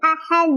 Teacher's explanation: Cara bacanya adalah dipantulkan, pantulannya besar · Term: qalqalah kubro